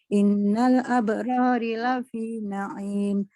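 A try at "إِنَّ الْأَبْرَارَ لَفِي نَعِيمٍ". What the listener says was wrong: Innal abroro, harokatnya Ibu. Innal abroro lafi na'im.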